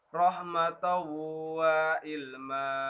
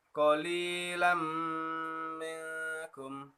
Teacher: Jadi apabila nun mati atau tanwin bertemu dengan salah satu huruf keempat tadi itu, maka hukum bacaannya dibaca lebur tapi didengungkan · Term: idgham bi gunnah